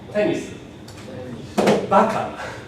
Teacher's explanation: In this case, I hit the accent on the very first one. So I don't have a low and then it goes up. It just is high and falls right from the very beginning.